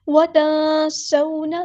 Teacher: بالبر، یہاں پر لام ساکن کو ہلانا نہیں ہے، بالبر نہیں پڑھنا، بالبر وتنسون، یہاں پر دیکھیں گے آپ نون ساکن کے بعد سین آیا ہے تو یعنی یہاں پر اخفا ہو رہا ہے، تنسونا نہیں پڑھنا، تنسونا، اخفا کرتے ہوئے یعنی نون کی آواز کو چھپانا ہے، چھپاتے ہوئے آپ لوگوں نے ایک الف کے برابر رکنا بھی ہے، جلدی سے نہیں پڑھنا۔